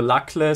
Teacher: the stress in accusative singular lakle, suffering, is the disyllabic stress, so the stress is on the first syllable